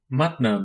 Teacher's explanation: it is a bilabial nasal pronounced like the m in magma